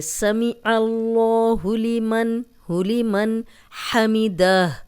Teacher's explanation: اللہ اور اللہم کا لام، اس کے پیچھے زبر یا پیش ہو تو لام موٹا پڑا جاتا ہے، یہ عین پہ زبر ہے تو یہ لام ہم موٹا پڑھیں گے